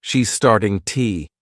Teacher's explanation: instead of two you can use an unstressed T